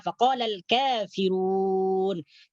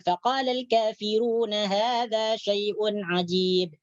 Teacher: ketika kita mewaqafkan di perkataan kafirun maka dipanjangkan sampai 6 harakat ya, 6 harakat karena ini disebut dengan mad arid lisukun.